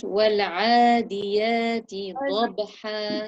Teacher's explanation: pronounce the ain from the middle of your throat